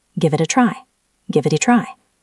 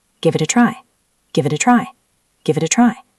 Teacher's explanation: It ends in T. A is a vowel. That's a flap T.